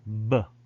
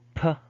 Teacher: there is so much vibration in your mouth compared to voiceless there is not much vibration in your mouth